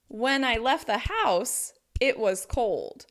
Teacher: stressing when, left, house, and cold helps give you the main meaning of the sentence